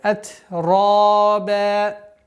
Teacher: После ра твердый, ба мягкая.